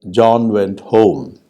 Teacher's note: john went home has three degrees of stress the strongest is on the last word and then this next is on john